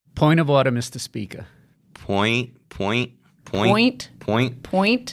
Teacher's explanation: the n and the T at the end are kind of in my throat